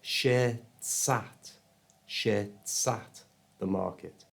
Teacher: I also moved the S sound, which is not a vowel sound from the end of shirts, to the front of the A in at. So it became shirtsat, the market.